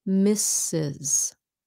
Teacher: the last s sounds like a z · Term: z sound